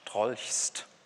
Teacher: Da haben wir im Grunde vorne und hinten extrasilbische Konsonanten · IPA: ʃtʁɔlçst